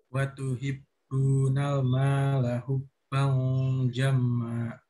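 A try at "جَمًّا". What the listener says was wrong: Lagi jamma, jangan lupa guna.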